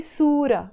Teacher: when they are on their own, you don't pronounce this ta marbuta, the t sound. You just say sura.